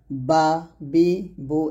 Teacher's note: বা টা দুই ঠোঁট মিল করে ওই ঠোঁট থেকে উচ্চারণ করতে হবে